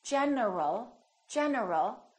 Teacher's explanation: my tongue is moving for the n and it's moving for the L